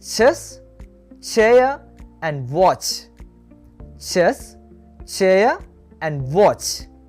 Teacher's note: Africates are concerned sound just starts like a complete closure but it ends like a fricative